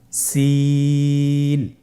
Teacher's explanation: সিন হরফটি উচ্চারণ ক্ষেত্রে অবশ্যই তিন আলিফ টেনে পড়তে হবে। সিন হরফটি বারিক হরফ পাতলা করে উচ্চারণ করতে হবে।